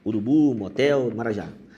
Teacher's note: oxítona a sílaba mais forte é a última